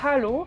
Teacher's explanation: avec bien le Hallo, bien le H aspiré